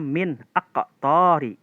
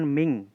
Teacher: Jadi nun mati dan tanwinnya itu dibaca jelas kalau ketemu huruf alif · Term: idhar